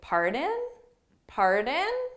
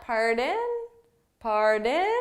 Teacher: Now, You could also say pardon, pardon, which is a little more formal sounding. Again, we need to make sure you have that intonation and it's rising. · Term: rising intonation